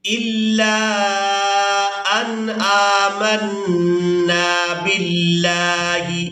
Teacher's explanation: یہاں نون ساکن پر ہم نے کرنا ہے اظہار، یعنی نون کی آواز کو ظاہر کر کے ادا کرنا ہے